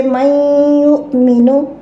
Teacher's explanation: You will say it with gunna. You will merge this nun in ya with gunna. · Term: idgham with gunna